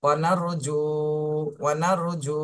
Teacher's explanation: র সাকিন ডাইনে জবর র মোটা করে পড়তে হবে, ওয়ানার জু, জুতে একালিপ টান দিতে হবে , পেশের বামে জজমালা বাবা মাদের হরফ, ওয়ানার রুজু ওয়ানার রুজু,